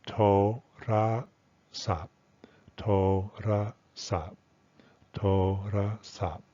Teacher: The first and third syllable are stressed and the middle syllable is unstressed. So being unstressed in everyday, casual, informal conversation, this will be reduced to the vowel will be reduced to schwa and the tone will be reduced to schwon.